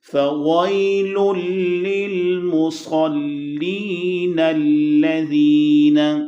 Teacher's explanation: نون کو ڈائریکٹ لام سے جوائن کیا جائے گا، حمزہ نہیں پڑھا جائے گا، وہ گر جائے گا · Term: حمزہ وصل